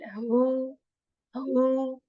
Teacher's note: this is sound which comes from the lower portion of the throat, and it is actually very, you can say deep, very clear sound with this airy sound as well.